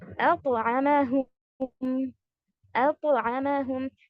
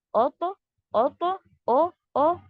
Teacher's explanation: हमजा light है, जो first अलिफ के ऊपर फतहा है, वो लाइट है उसको तो के साथ हैवी नहीं करना है।